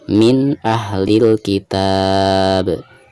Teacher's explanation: Tapi di sini kita sedang membahas izhar. Jadi suara nun sukun tersebut harus dijelaskan